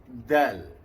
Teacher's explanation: Hujung lidah, pangkal gigi atas. Mengenai sebahagian gigi dan gusi. Ya. Jadi bunyi du, bukan du.